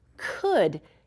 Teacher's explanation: It's tricky because we don't hear the L in it